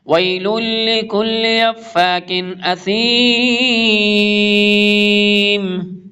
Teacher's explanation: تنوین کے بعد حمزہ آ رہا ہے، اظہار ہوگا، نون کا ساؤنڈ بالکل کلیئر ریڈ کیا جائے گا۔